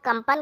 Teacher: क और फिर आधा म में कन्वर्ट होकर के फिर पन हो जाता है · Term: अनुस्वार